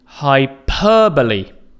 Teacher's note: The stress again is on the second syllable.